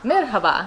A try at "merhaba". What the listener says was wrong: you should you know uh pronounce the h a little louder